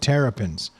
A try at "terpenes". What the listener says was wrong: I think it's terpenes. Terpenus. There's no E between the R and the P.